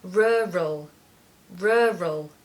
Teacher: the focus and the stress is on the first syllable and you need a schwa in the second part so you need to hear the sound uh in the second